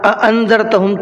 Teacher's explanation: اَأَنذَرْتَهُمْ کے اندر 2 حمزہ ہیں، تو دونوں کو الگ الگ ادا کر کے پڑھنا ہے